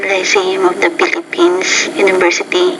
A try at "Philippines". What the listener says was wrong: And then in the Philippines, so the Philippines, that PH is actually an F, and you have to pronounce that with a little bit more air coming through with your lips and your teeth coming together.